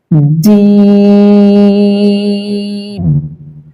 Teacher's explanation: এই হরফটা তিনলিপ টান হবে এবং এটি উচ্চারণ হবে জিহ্বার মধ্যখান তার বরাবর উপরের তার সঙ্গে লাগিয়ে